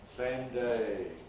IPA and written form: ˈseɪm ˈdeɪ (same day)